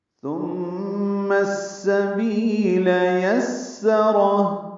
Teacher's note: کناروں سے لگائیں گے، میم مشدد پہ غن نہ کریں گے، میم کو السبیل کی سین سے ملائیں گے، ادغام شمسی ہوگا · یسرہ میں سین صفیر کی آواز سے ادا کریں گے